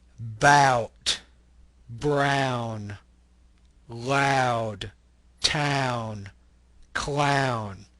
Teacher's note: The ah sound kind of glides into the oo.